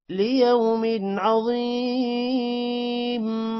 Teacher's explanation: ضا موٹا ہوگا، ضا کے بعد یا ہے، ضا جب یا کے ساتھ ملے گا تو تھوڑا سا لمبا ہوگا